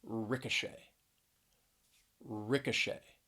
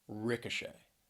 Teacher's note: three syllables stress is on that third syllable